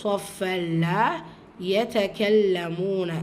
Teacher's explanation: இந்த இடத்துல லாம் ஷத்தா இருக்குது, அழுத்தம் கொடுத்து ஓதணும்.